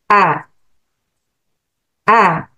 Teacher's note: saya mengucapkan tanpa ada aliran ee udara · pangkal lidah Saya turun dan juga menjauh ee lidah saya menjauh dari langit-langit sehingga terbuka · saya mengucapkan tanpa ada aliran udara karena dia al-jahar, kemudian dengan kuat A, dan pangkal lidah saya turun dan juga menjauh, lidah saya menjauh dari langit-langit sehingga terbuka dan dia al-ismat, keluarnya dari sini susah ya. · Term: huruf hamzah